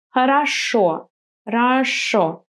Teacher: the syllable that is just next to the stressed O is going to be weaker. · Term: unstressed O